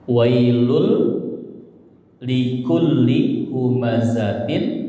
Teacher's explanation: Melebur ke lam jadi wailul ya. Jadi lunnya melebur ke lam tanwinnya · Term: idgham bila gunnah